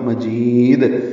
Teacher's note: مجید جیم کو لمبا کریں گے اور دال ساکن پہ قلقلہ ہوگا